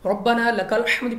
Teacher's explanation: را پر زبر ہے، را کو پر پڑھنا ہے